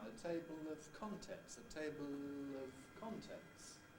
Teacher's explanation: i think i'm not unusual in using a clear l before a vowel as long as it's closely linked into it